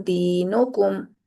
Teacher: फिर मीम साकिन की आवाज को हमने जाहिर करके पढ़ना है। उसको छुपाना नहीं है। उसको दूसरे के अंदर दाखिल नहीं करना। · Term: इजहार शफवी